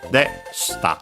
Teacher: The e is barely heard, if at all, because it's between unvoiced consonants.